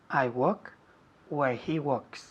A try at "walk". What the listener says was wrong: Walk. La L no se dice. Walk. Walk, no walk. Walk, decimos.